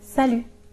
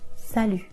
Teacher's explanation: Be careful, the T is silent.